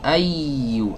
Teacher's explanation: Naber itu adalah suaranya agak dihentak sedikit ya, untuk memastikan ya tasydid yang ada di sana ya. Jadi supaya tidak dianggap lin ai tapi ai agak dihentak sedikit ya. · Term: nabr